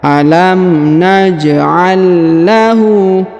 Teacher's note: huruf ja berharakat sukun maka kita pantulkan atau kita qqalahkan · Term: qalqalahkan